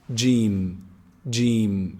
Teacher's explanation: pronounced from the middle of the tongue the middle section of the tongue and the roof of the mouth from inside gene gene it's very easy gene make sure you